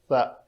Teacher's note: سا کا مخرج ہے نوکے لسان دونوں دانتوں کے درمیان باہر دیکھنے والے کو نظر آئے